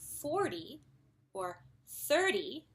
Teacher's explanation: when we say 40 or 30, the stress is on the first syllable, and the T is actually softened a little bit